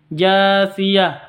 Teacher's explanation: Jiang tanwin bertemu dengan Jim cara bacanya samar disertai deng dengung samar disertai dengung karena ikhfa Hakiki